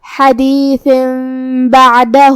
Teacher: پھر حرف البا ہے کلمت بعدہ میں، با حروف الاقلاب میں سے ہے اور اقلاب کا معنی ہے بدل دینا، تو ہم یہ تنوین کو میم میں بدل کے غنہ کے ساتھ یہ حکم کو ادا کریں گے